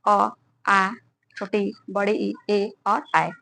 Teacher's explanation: उच्चारण करते समय ओठ का आकृति गोल नहीं बनती, उसे अवर्तुल या अवृत्ताकार कहते हैं।